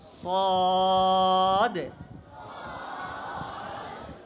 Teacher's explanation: ঠোঁট গোল করা যাবে না, ঠোঁট একদম খোলা থাকবে, মেলা থাকবে